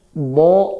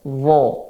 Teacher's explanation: huruf bo di tepi lidah. Huruf wo di ujung lidah.